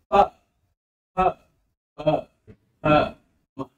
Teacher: ओष्ठ ध्वनियों में दोनों ओठ सटेंगे,